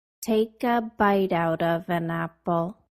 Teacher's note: I pushed forward the consonant sounds at the end of each word and place them at the beginning of the words that followed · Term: connect speech